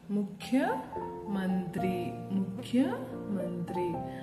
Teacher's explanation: ಇದು ಮಹಾಪ್ರಾಣ ಖಚ್ಚು ಉಸಿರನ್ನ ಬಿಟ್ಟು ಉಚ್ಚರಿಸಬೇಕು